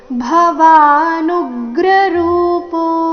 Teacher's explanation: ಭವಾನುಗ್ರ ರೂಪೋ ನು ಮೇಲೆ ಆಘಾತ